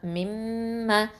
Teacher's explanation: முழுக்க அதாவது பூரணமான குன்னா செஞ்சு ஓதணும் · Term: அக்மல் குன்னா